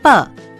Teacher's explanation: जिन व्यंजनों का उच्चारण करते समय मुख से कोई 2 अंग आपस में एक दूसरे को स्पर्श करते हैं उन्हें स्पर्श व्यंजन कहते हैं। जैसे प, इसमें दोनों होंठ एक दूसरे को स्पर्श करते हैं